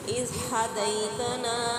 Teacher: ज़ाल को साकिन करके अदा करेंगे, लेकिन नरमी के साथ अदा करेंगे। इसके ऊपर सीटी नहीं आनी चाहिए, सख्ती नहीं आनी चाहिए, नरमी से अदा होने वाला हरफ।